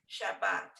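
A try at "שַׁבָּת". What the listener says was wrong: Exactly.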